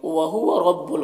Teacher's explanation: रॉ के ऊपर ज़बर और रॉ को पुर पढ़ेंगे